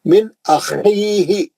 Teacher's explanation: نون ساکن کا اظہار حلقی حرف حمزہ، خا کھردرا پڑھیں گے